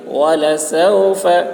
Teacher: فا بولتے وقت ہوا نکلتی ہے